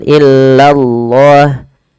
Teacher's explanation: Illallah, la-nya tapi tipis, tidak boleh tebal.